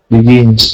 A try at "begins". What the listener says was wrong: Okay, but we have begins. We need to hear that z sound at the end of it. Begins.